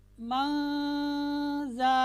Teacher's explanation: ये नून साकिन के बाद और नून तनवीन के बाद हुरूफ़ इख्फ़ा 15 हैं, उनमें से कोई भी हर्फ आए तो हमने नून साकिन और नून तनवीन को उसके मखरज से अदा नहीं करना बल्कि उससे पहले पहले अदा करना है और आवाज़ नाक में जाएगी